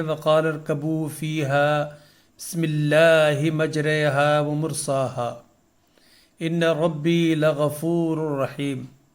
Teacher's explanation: اس آیت میں موجود کلمہ مجریہا میں حرف را کو امالہ کے ساتھ یعنی مجہول پڑھا جاتا ہے. جس طرح اردو میں کمرے اور پنجرے کہتے ہیں، یعنی جس طرح اردو میں کمرے اور پنجرے کہتے وقت را کا تلفظ کیا جاتا ہے.